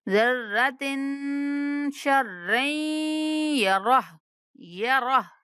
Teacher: ذرۃ پہ بھی غنہ کریں گے اور شر پہ بھی